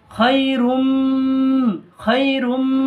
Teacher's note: এটা এক আলিফ গুণনা হবে কারণ এটা ঈদগামে নাকিস, তানবিনের উপরে মিম এসছে